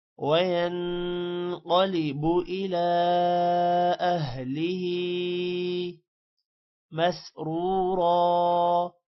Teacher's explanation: اہلہ ہا کے نیچے کھڑی زیر ہے، تھوڑا سا لمع کریں گے